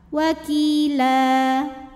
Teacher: Mad iwad sebab ada baris tanwin fathah yang kita berhentikan maka cara bacanya baris tanwin fathahnya jadi fathah saja jadi satu dan baca panjang dua harakat